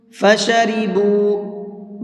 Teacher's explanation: با کو تھوڑا سا کھینچ کر کے پڑھیں گے۔ تھوڑا سا کا مطلب ہے ایک الف کے برابر، یعنی 1 سے 2 سیکنڈ تک اس کو کھینچیں گے۔ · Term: واو مدہ